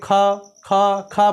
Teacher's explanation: ख ख ख बोल करके देखेंगे तो आपके गले से आवाज़ आ रही है, और जब गले से आवाज़ आ रही है अर्थात इसका उच्चारण स्थान क्या है, कंठ है